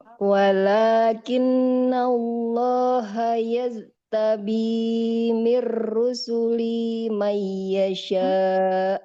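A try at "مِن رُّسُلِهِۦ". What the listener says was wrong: Min rusulihi. Nggak boleh ada huruf yang hilang Ibu.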